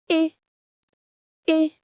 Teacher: it's a single pure sound. Your mouth stays in one position from the beginning to the end. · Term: pure vowel